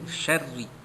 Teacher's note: Ayat yang keempat min syarril waswasil khannas, min syarri, mim nun mati jumpa dengan shin, ikhfa hakiki, menyembunyikan bunyi nun mati bertemu dengan huruf shin. Syarri, ri itu dibaca bawah tarqiq, baris bawah nipis saja. Baca sebutan ra-nya syarri.